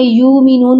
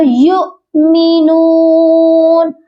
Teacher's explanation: حمزہ جب بھی کسی حرف کے اوپر آتا ہے نیچے والے حرف کو ہم نہیں پڑھتے ہیں، تو یہاں پر ہم نے واؤ کو نہیں پڑھنا، یہ پڑھا جائے گا یؤمنون، حمزہ پر جھٹکا دے کر پڑھا جائے گا